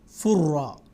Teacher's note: تنوین کی جو آواز ہے، نون کی جو آواز، وہ را میں بدل جائے گی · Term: نون ساکن اور تنوین کا ادغام